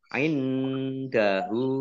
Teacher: Lam fathah berdiri mat tobi'i. Indahu, nun sukun bertemu dengan huruf dal, bacaan ikhfa, dibaca samar-samar.